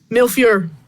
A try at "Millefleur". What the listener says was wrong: It's not mil.